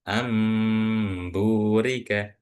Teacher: Jadi nun sukun di sini kita bayangkan dia ini bukan huruf nun tapi huruf mim. Jadi bukan anurika bukan tapi amburika. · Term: Iqlab